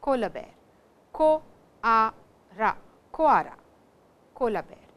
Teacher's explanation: we do not have L in Japanese. All L's are supposed to be pronounced as ra sounds.